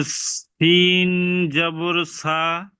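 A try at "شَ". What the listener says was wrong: নোক্তাওয়ালা আছে, শিন জিবের মাঝখান দিয়ে উচ্চারণ হবে, শিন জবর শা।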